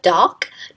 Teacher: G is voice velar plosive. Since it is voice, it affects the s plural ending to be pronounced as voice consonant z.